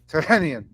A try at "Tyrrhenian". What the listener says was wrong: He thinks it's funny that you pronounce the H so clearly.